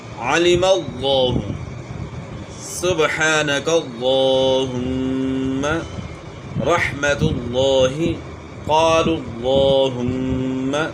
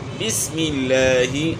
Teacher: لفظ اللہ یا لفظ اللہم کے لام سے پہلے والے حرف پر زبر یا پیش ہو تو موٹا پڑھنا ہے، اگر اس سے پہلے زیر ہو تو باریک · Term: موٹے لام